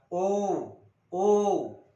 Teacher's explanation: तसं ओजेवाला ओ कंठातून दोन्ही बाहेर काढायचा आणि ओठाला ओठ भिडवतात बघा, ओ म्हणजे ओठांना संवृत्त करावं लागतं. ओठ जर संवृत्त नाही केलं तर यांची रचना होणार नाही. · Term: कंठोष्ठ